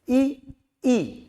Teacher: अब आप जब ई बोलेंगे तो आपका मुख जो है वो पूरा बंद हो जाएगा,